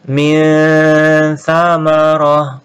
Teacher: Kemudian ini juga minha dibaca jelas, nun sukun ketemu tha ikhfa disamarkan dan didengungkan